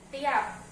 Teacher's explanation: bunyi frikatif S pada awal kata masih sering diucapkan sebagai T